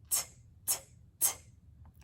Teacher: Talking Tess starts words like 10, top, and tell with her whispered T sound